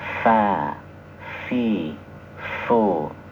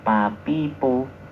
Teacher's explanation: Nah, bibir bawah bagian dalam itu bertemu dengan ujung gigi atas.